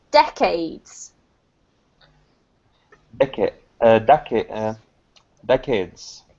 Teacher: so the emphasis is here on the first syllable